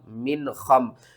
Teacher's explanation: میم نون زیر من کرنا ہے، نون ساکن کے بعد حروف حلقی میں سے خا آ رہا ہے، تو یہاں پر ہم کیا کریں گے، اظہار ، میم نون زیر من، خا میم زبر خم، من خم،